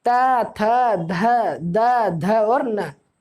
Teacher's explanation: हमारी जीवा जो है वो हमारे दांतों को टच करती है इस वर्ग को बोलने में, त वर्ग को बोलने में। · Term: दंतव्य वर्ग